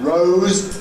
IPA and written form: rəʊz (rows)